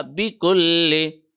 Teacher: لام کے اوپر تشدید ہے، اس کو آدھے سیکنڈ کے لیے پریس کیا